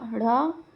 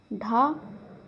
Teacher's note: उत्क्षिप्त व्यंजन होते हैं। जीभ के ऊपर लगने से जो उत्पन्न होते हैं वे आपके उत्क्षिप्त होते हैं। हिंदी में दो जो व्यंजन है वो उत्क्षिप्त हैं।